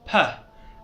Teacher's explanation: So you open your mouth, open your lips, P, and there's like air comes out